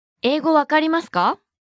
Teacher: Note that you need to pause after the word meaning English.